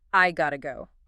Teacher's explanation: The T sound in the middle of the word gotta undergoes that intervocalic flapping we discussed earlier. It transforms into a soft D sound. So the final fully reduced real world pronunciation becomes I got to go.